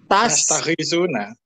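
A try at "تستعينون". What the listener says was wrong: Tastainuna. Ada kan nastain, tastainu. Minta tolong. Pakai ain. Tastai bukan goin. Tastainuna. Iya karena budu wa nastain, masih ingat nastain? Kalau nastainu kami minta tolong. Kalau pakai ta'awun kan kalian. Tastainuna. Kalian minta tolong. Jadi tastainuna dengan tastagitsuna kan hanya beda titik, goin titik ya. Sa titik.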